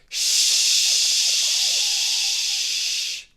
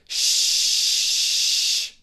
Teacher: Your throat doesn't vibrate, it's still. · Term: unvoiced sounds